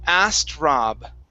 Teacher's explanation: go straight to a t forget about the k sound